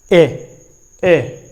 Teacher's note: बोलिए, एक बार बोल के देखते हैं, ए, यानी क्या होता है, कंठ भी काम कर रहा है और तालु भी काम कर रहा है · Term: कंठ तालव्य